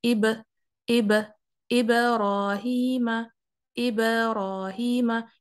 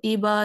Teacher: बा को उसी की जगह रखकर बाउंस करना है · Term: कलकला